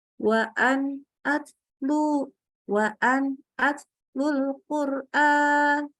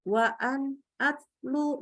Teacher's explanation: Sifat tawasud tidak nampak ketika nun sukun baik sukunnya asli ataupun sukun karena waqaf, maka suaranya jadi syiddah nih, terputus ya.